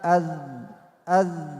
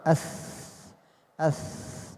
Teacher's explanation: لولا الجهر لكان الذال ثاء يجري فيها النفس. أث أث. أما الذال أذ أذ لا يجري فيها النفس، يجري فيها الصوت. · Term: مجهرة